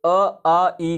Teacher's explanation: अ, आ, ई को बोलेंगे तो सिर्फ और सिर्फ मुंह से हवा निकलेगा, नाक से हवा नहीं निकलेगा। तो इसे कहते हैं निरनुनासिक।